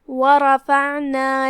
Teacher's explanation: کلمت ورفعنا میں یہاں حرف الراء ہے جو کہ اس پہ زبر ہے، لہذا یہاں را کا حکم ہے تفخیم